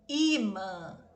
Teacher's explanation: Imã, a mesma situação. Tem acento, é paroxítona, terminada com um som nasalizado.